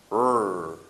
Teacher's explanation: It's very close to the lateral sound, but the key differentiation here is that our tongue is not touching our alveolar ridge. It's approximately in the middle of our mouth. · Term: R sound